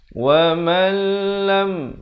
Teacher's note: Nun mati bila bertemu lam hukumnya idgham bila gunnah, masuk tanpa dengung.